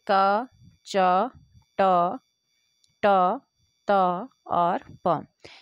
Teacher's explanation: क वर्ग कंठ से बोला जाता है, च वर्ग तालु या तालव्य से बोला जाता है, ट वर्ग मूर्धा या मूर्धन्य से बोला जाता है, त वर्ग आपका दंत से बोला जाता है, प वर्ग आपका ओष्ठ से बोला जाता है।